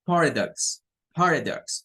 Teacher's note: Como una mezcla de A-O, DAX. Y la X, recordemos que tiene un sonido de K y S mezclada · Y miren qué curioso, una schwa en medio.